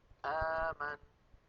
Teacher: بالهمزة المتحركة الأمر معكوس، فإن الوترين الصوتيين يكونان ملتصقان ثم يبتعدان